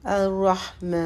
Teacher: میم کے اوپر جو ہے وہ کھڑا زبر ہے، تو اس کو 2 حرکت لمبا کریں گے، الرحمن۔ اب آگے نون ہے، نون کو ہم کو ساکن کرنا، جو یہ کھڑا الف ہے یا کھڑا زبر ہے اس کو ہم تھوڑا لمبا کرتے ہیں، 3 سے 4 حرکت دیتے ہیں۔